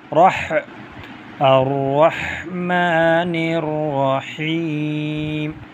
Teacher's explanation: یہ ہا ایک ہوتا ہے ہا، حلق سے نکلے گا ہا